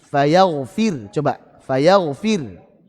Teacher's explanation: Contoh, kata fayaghfiru, fayaghfiru, ru-nya dhammah ya. Saat waqaf maka kita baca ro-nya dengan tipis.